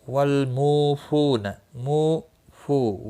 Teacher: واو مدہ ہیں دونوں، 1 الف کے برابر کھینچ کر پڑھیں گے